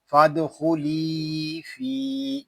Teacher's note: یہاں فا کو بھی ہم ایک الف تک کھینچ کر پڑھیں گے کیونکہ یہاں بھی یا مدہ ہو رہا ہے ، یا مدہ اس لیے ہو رہا ہے کہ یا ساکن